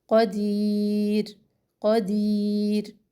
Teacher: شیئن قدیر، دی یا مدہ، اور را جب ساکن ہم یہاں پہ اس کو چھوڑیں گے تو باریک ہی ہوگی، یاد رکھیں را سے پہلے اگر یا ہو تو وہ را جب ہم ساکن کرتے ہیں تو اس کو بالکل باریکی سے چھوڑ دیتے ہیں